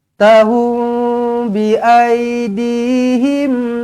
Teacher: Mim kosong bertemu ba, ikhfa syafawi, dengungkan dua harakat.